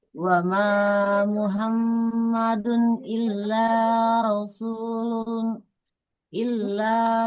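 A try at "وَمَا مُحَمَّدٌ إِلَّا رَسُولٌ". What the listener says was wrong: Jangan Muhammadun, tapi Muhammadun. Huruf H di tengah tenggorokan ya.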